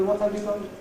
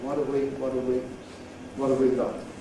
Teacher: with just a schwa and /v/, and usually wouldn’t have an /h/ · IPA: /əv/